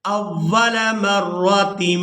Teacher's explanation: یہاں تنوین میں جو نون کی آواز ہے اس کو میم کے ساتھ بدل کر ادا کریں گے، یہاں پر آپ چھوٹی میم دیکھ رہے ہیں، یہ اسی وجہ سے ہی ہے کہ یہاں ہم نے تنوین میں جو نون کی آواز ہے اس کو میم کے ساتھ بدل کر ادا کرنا ہے اور اس کو اقلاب بھی کہتے ہیں۔